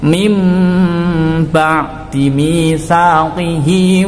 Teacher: Bunyi nun sukun ini diganti dengan bunyi mim sukun. Seakan-akan ono huruf mime, ya. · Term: iqlab